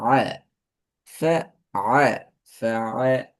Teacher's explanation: ஐன உச்சரிக்கணும் தொண்டையிட சென்ட்ரலுக்கும் அங்கால டீப் சைட்ல இருந்து வரணும், பின்பகுதியில இருந்து வரணும், பேக்ல இருந்து.